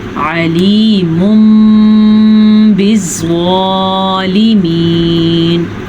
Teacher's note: ہم تنوین کو میم میں بدل کے پڑھیں گے اور غنّے کے ساتھ پڑھیں گے. یعنی کہ ویسے اگر اس کو ہم پڑھتے تو علیم بالظالمین تھا، جبکہ اقلاب کی وجہ سے ہم اس کو پڑھیں گے علیم بالظالمین غنّے کے ساتھ بھی.